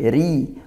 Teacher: ri ra-nya tarqiq ditipiskan karena dia kasrah